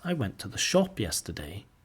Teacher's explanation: the main stress on shop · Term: sentence stress